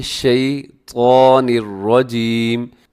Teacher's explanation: حرف طا، اسے آپ نے موٹا پڑھنا ہے، اسے کبھی بھی باریک نہ کیجیے گا، یہ موٹے حروف میں ہے۔